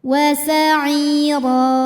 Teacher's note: Ro dibunyikan secara tafkhim karena harokatnya di atas, maka bacanya tebal. Ro apabila berhenti ada mad namanya mad iwad karena ada harokat tanwin fathah yang diberhentikan.